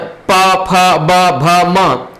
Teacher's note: और प, फ, ब, भ, म ये ओष्ठ से बोले जाते हैं। जब हम इनका उच्चारण करते हैं तो आपका जो दोनों जो ओठ है, ओठ आपस में सटता है, मिलान करता है, तभी इनको हम लोग बोल सकते हैं, नहीं तो नहीं उच्चारण हो सकता है।